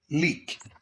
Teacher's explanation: this is a voiceless sound and you can hear it at the beginning of the word keep and at the end of the word leak